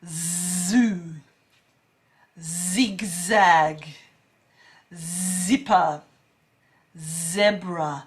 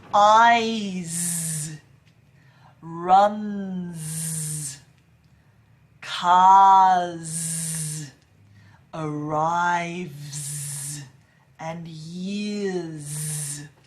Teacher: the only difference is with the zed you add your voice you add that vibration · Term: z sound